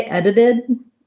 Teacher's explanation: So when I add the word it, then I have another link there, and that D is more solid. When I say edited, I don't necessarily release that final D either.